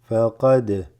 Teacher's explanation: The dal is slightly shaken, what's called qalqala.